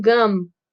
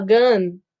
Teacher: Como tem um M no final, vocês têm que fechar a boca. Então, gum, tem que fechar os lábios. · Quando as palavras terminam com M, você tem que fechar os lábios, porque é uma consoante bilabial.